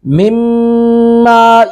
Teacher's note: اب میم ساکن کے بعد میم مشدد ہے، ادغام با گنہ کریں گے